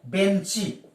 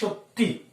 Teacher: এখানে ই স্বরধ্বনির আগম ঘটেছে শব্দটির শেষে বা অন্তে, তাই একে আমরা বলি অন্তঃস্বরাগম।